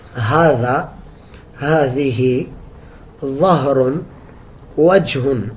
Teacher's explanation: ہا یہ بالکل حلق کے آخر سے ادا ہوتا ہے، اقصی حلق اس کو کہتے ہیں